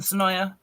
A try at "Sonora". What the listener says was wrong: Sonoa. Sonoa. Yeah, you gotta put an R in it if you're really Sonora.